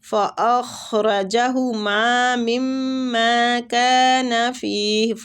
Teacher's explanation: خا جو ہے یہ مستعلیہ حروف ہے، پور پڑھیں گے ، را زبر کی وجہ سے پور پڑھیں گے، ہما میم